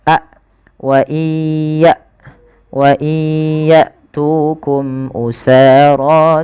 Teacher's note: hamzah itu ketika dia mati sukun dijelaskan sifat syiddah dan sifat jaharnya